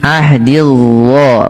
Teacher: Ini jangan dibaca zo ya, ahdiz zo, tapi ahdil zo, ujung lidah nempel dengan gigi seri atas